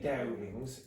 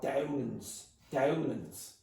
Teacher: Dublin English very often removes the ing and it becomes in. So you'll have Dowlands instead of Dowlings.